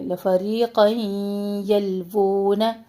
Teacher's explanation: تنوین کو ہم یا سے ملا رہے ہیں، مرج کر رہے ہیں یا میں. یہاں پہ ادغام مع غنہ کر رہے ہیں.